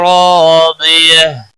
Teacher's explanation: را الف مدہ ہے ایک الف کے برابر کھینچ کر پڑھیں گے. را زبر کی وجہ سے پر پڑھا جائے گا.